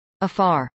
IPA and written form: əˈfɑːr (afar)